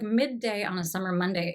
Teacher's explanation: So here we have all of these M sounds. I think that's a bilabial nasal.